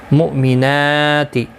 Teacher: یہاں پر حمزہ ساکن کو جھٹکے کے ساتھ ادا کیا جائے گا، نون کے اوپر کھڑی زبر ہے، ایک الف کی مقدار کے برابر کھینچ کر پڑھا جائے گا۔